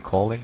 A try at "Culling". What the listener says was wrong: Culling, it's called. No, cull, not call. Cull, okay. Yes, cull. Cull.